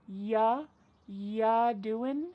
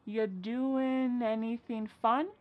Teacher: Ya doing, we're dropping that G again.